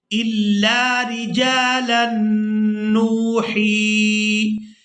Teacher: جیم کو الف مدہ کی وجہ سے ہم نے کھینچ کر ادا کرنا ہے، لام کو نون مشدد کے ساتھ ملائیں گے تو غنہ کے ساتھ ادا کریں گے